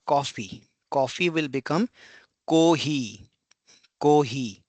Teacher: Next is o. It's the o sound as in not. it is perceived as a short O or less frequently as a long O.